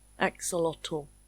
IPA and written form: ˈæk.səˌlɒtəl (Axolotl)